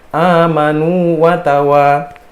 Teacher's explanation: Nah, di situ kan nu kan itu kan ada ya waw kan, ada ya waw, ada waw yang disukunkan mati ketemu dengan waw yang dia berharokat hidup, maka dia nggak bisa diidghamkan